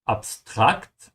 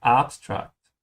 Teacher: I'm stretching the second A in German. In English, you stretch the first one, you say abstract.